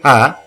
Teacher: as the air is thrown out clearly as you say ha, it is a mahaprana